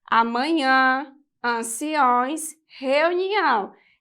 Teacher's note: o tio marca nasalização das vogais a e o